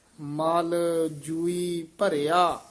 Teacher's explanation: ਮਲਜੂਈ ਇਕੱਠਾ ਨਹੀਂ ਕਹਿ ਦੇਣਾ